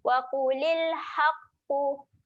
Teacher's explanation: Haqqu dekat sini ada huruf ha. Ha ni ha yang pedas. Jadi kita kena tekan sikit kat tengah kerongkong